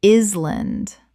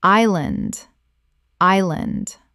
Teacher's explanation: The S is completely silent. Two syllables.